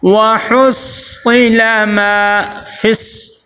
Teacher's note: فا کو صاد کے ساتھ ملائیں گے، صاد کو سختی کے ساتھ ذرا سا ٹھہراؤ پیدا کر کے پڑھیں گے